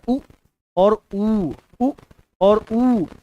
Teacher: ओष्ठ से इसका उच्चारण होता हुआ हमको नजर आ रहा है। तो उ और उ का उच्चारण ओष्ठ से होता है।